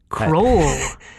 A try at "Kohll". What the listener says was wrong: There's no R there, it's just Cole.